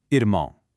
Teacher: First, check out that upside-down R symbol. In a lot of Brazilian dialects, that R is actually pronounced from the back of the throat, almost like an English H. · We've got another nasal sound, but this time it's a diphthong. That means two vowel sounds are gliding together, finishing off with a wa sound.